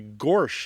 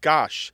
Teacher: this is known to linguist as the intrusive r or the excrescent r